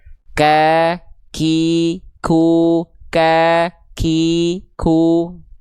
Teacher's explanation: dia hanya keluar berupa percikan nafas saja. Ya, hanya keluar berupa percikan nafas saja. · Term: hams